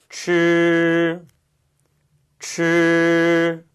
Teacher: 츠 자 그럼 츠 발음은 어땠나요네 추 발음할 때 위치하고 똑같죠 혀끝을 딱딱한 입천장 앞쪽에 대시고 그 사이에 바람을 통과시키면서내는 소리였어요